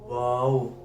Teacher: इधर से नून अदा होता है आगे आ जाता है वाओ दोनों होठों को गोल करने से वाव अदा होता है